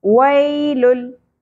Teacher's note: इदगाम बगैर गुन्ना होगा, यानी हमने मिलाना है लेकिन गुन्ना नहीं करना, ठीक है। इस तरह नाक में आवाज़ नहीं ठहरानी।